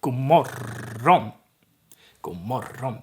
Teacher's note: It's not a long O there because the R is long. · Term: long R